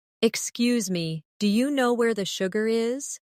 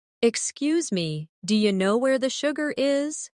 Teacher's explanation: Notice how do you changes to dia?